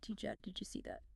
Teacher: if it ends in a D, like did you, it becomes a J sound